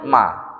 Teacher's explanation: ketika kita nyebut Emak bibir dua-duanya kan rapat kan nah sama dengan huruf ba ba kan rapat enggak bisa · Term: huruf bibir